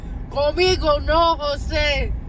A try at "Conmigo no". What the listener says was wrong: See, the way you did it made me think like you're inviting me to dinner or something. That's what I thought. The intonation is super important on these because you want to convey the right message.